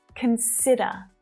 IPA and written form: kən'sɪdə (CONSIDER)